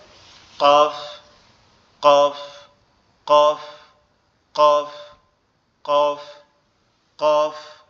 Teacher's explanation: আর এই কফের মাখরাজ হচ্ছে, কফের মাখরাজ হচ্ছে আমাদের জিহ্বার শেষ অংশ, অর্থাৎ জিহ্বার শেষ অংশটা উপরের তালুর সঙ্গে লাগবে, ঠিক আছে? জিহ্বার শেষ অংশ উপরের তালুর সঙ্গে লাগবে, লেগে উচ্চারিত হবে কফ। কফ, কফ, কফ, কফ, কফ, ঠিক আছে?